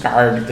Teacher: Ele arrasta o R aí nessa construção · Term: R retroflexo